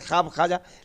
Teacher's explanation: ख्वाब खाजा लिखा तो गया लेकिन आपको वाव नहीं पढ़ना है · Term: मादूला